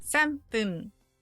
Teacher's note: Now the 3 is simple, it's just san. But fun becomes pun. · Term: sound change